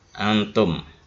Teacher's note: ikhfa ya, agak mendengung sedikit